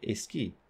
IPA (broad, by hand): eski